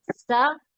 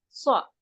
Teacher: जैसे सीन है, सीन जबर सा, स्वाद जबर स्वा, दोनों में फर्क करना। सा स्वा, सीन को बारीक पढ़ेंगे, स्वाद को मोटा पढ़ेंगे